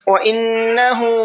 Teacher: نون کے اندر غنہ کریں گے